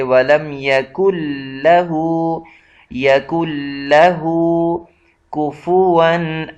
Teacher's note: یکن لہ، ولم یکن لہ، یہاں نون آیا ہوا ہے لیکن نون آگے لام پر شد ہے تو اس وجہ سے یہ نون ساکن جو ہے یہ حذف کر دیا جائے گا